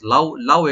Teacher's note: লাউ এখানে হারফে লিন, আমরা শর্ট করে পড়বো, নুনে কোনো টান নাই।